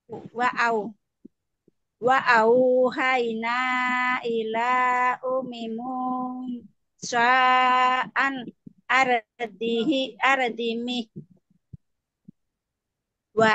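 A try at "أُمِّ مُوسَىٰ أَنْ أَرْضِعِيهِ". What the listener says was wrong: ini bukan mim ya, ini huruf ain. Kalau mim itu ada bolongnya, gitu. Ini huruf ain.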